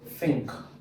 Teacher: it is produced by placing the tongue against your upper teeth are blowing air out. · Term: voiceless